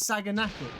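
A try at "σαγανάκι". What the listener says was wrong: But apparently the G is silent.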